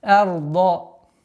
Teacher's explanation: Ра в данном случае и звук дад твердое произношение.